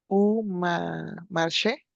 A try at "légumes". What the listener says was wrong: Ya, muy bien, excepto legume. La S no la pronunciamos, la última letra, y la U, recuerda que boca de U, pero sonido de I. Legume.